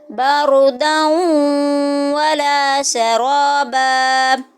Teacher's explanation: دال کے اوپر دو زبر تنوین اور آگے واو آ رہی ہے، واو مشدد، تو یہ ادغام ہو رہا ہے، تو جب دو زبر دو زیر دو پیش کے بعد واو آتی ہے حروف یرملون میں سے، تو اگر حروف یرملون میں سے کوئی بھی حرف دو زبر دو زیر دو پیش کے بعد آ رہا ہے تو اسی میں آواز کو چینج کرتے ہیں۔